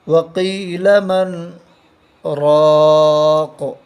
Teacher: کاف کے نیچے دو زیر کی تنوین ہے، دو زیر کی تنوین پر جب وقف کریں گے تو قاف کو ساکن کر کے پڑھیں گے